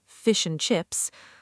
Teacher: And often becomes n like in fish and chips.